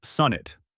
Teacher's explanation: Then add the quick, light it, just like the everyday word it. Keep that second syllable unstressed and short, and finish with a clear T.